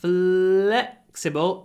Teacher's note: When you say flexible, make sure you stretch the L.